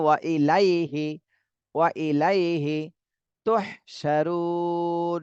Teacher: রুতে ৩ আলিফ টান দিতে হবে আর নুনে জজম দিতে হবে